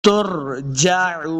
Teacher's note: را ساکن ہے، اس کو پر پڑھیں گے، ترجعون، عین کو صحیح لفظ سے پڑھنا ہے، عین پیش واو مدہ ہے، اس کو دو حرکات لمبا بھی کریں گے، آخر پہ ہم نے وقف کرنا ہے، وَإِلَيْهِ تُرْجَعُونَ۔